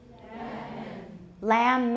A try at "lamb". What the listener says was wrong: Don't put a schwa in there. We're not using schwas here. Just read what we have.